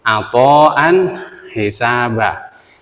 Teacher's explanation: karena hukumnya izhar kemudian tanwin bertemu dengan ha yaitu Aan hisaba ini tanwin bertemu dengan ha maka tanwin Harus baca jelas